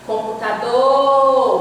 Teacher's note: você demora mais no do. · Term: sílaba tônica